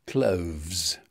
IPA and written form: kləʊvz (cloves)